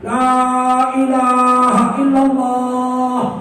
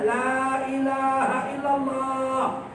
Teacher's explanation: Karena la ilaha illallah ini mengucapkannya gampang, nggak perlu menggerakkan mulutnya, bibirnya nggak perlu menggerakkan bibir, karena tidak ada di situ huruf bilabial. Huruf 2 bibir nggak ada situ, nggak bergerak pun bibir bisa mengucapkan la ilaha illallah.